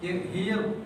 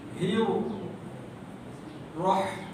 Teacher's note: Ra tu tebal tanpa muncung ya.